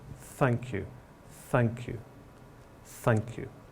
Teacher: falling tone finally we have uh thanks and greetings apologies and here we use a downward falling tone to express real gratitude